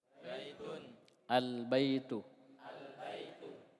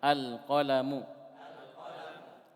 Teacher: Alif lam ini ketika masuk kepada sebuah kata dia terbagi dua. Ada yang al-nya dibaca, al. Ya, kalau bahasa tajwidnya izhar.